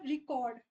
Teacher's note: अगर मैंने बोला रिकॉर्ड जिसमें मैंने री पे फोकस कर दिया तो वो रिकॉर्डिंग वाला रिकॉर्ड हो जाता है